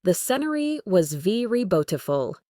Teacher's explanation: The was very are all quick and unstressed. Senory and Baful are the stars of the show.